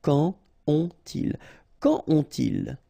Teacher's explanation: you don't make a liaison here between the two